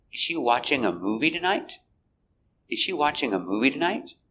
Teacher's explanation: we stress important words watching is the verb we stress watching and movie is a noun